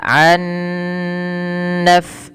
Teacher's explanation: nunnya dimasukkan ke huruf nun kedua dan ditahan, dan ini kita kenal dengan idgham bi gunnah.